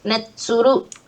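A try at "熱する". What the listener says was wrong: Nesuru. Jadi S-nya double gitu. Nesuru. Di omit itu nantinya, dilebur sama yang apa konsonan selanjutnya.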